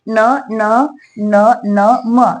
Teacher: अनुनासिक म्हणजे ज्याचा नाकामधून उच्चार होतो